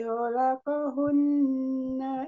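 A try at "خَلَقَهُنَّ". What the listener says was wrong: Ho-nya makhrajnya tebal, Bu. Kholaqo. Ko-nya penggal lidah naik. Dekat sama ko. Ho.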